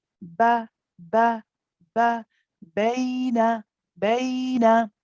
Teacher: with the ba, the lips do not go in. We don't go like this, ba, for example, okay?